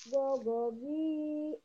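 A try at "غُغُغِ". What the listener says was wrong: Gogu. Bukan gogo. Gogugi.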